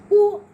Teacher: उ जब हम बोलते हैं तो हमारा ओठ जो है गोल सा हो जाता है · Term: ओष्ठ